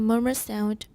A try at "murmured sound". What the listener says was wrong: Watch the D, murmured sound.